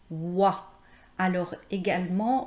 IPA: w